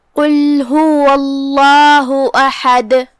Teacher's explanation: کلمت قل میں یہاں حرف القاف ہے. ہم قاف کو زبان کی جڑ اور تالو کے نرم حصے سے ادا کریں گے، جو کہ قاف حروف تفخیم میں سے بھی ہے، تو ہم اسے بھاری آواز میں پڑھیں گے